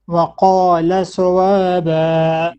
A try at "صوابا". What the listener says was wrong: You're saying صوابا, not oh. It's heavy. Your heavy letters need work, inshallah.